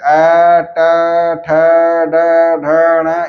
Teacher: मूर्धा से उत्पन्न होने के कारण इन ध्वनियों को मूर्धन्य वर्ण कहा जाता है